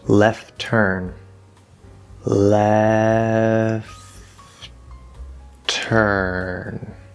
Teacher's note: You can actually drop the first T sound in this specific combination, left turn, and it's okay. Or you can sort of hold that first T to make it like a longer T, left turn.